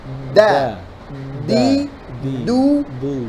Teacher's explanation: Yang kedua, mengucapkan dal tersebut terlalu ke bawah lidahnya sehingga medok deso begitu. Keluar nafasnya tidak boleh. Dal tidak boleh keluar nafas.